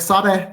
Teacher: in words like sade that end with an e there's an unwritten glottal stop at the end of the word